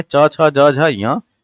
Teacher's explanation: च वर्ग ध्वनियां किस वर्ग में आती हैं? तो ये आती हैं तालव्य में